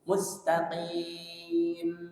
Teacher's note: Jadi mimnya sisa suara dengung sedikit saja di ujung. Nggak boleh dipanjangkan juga.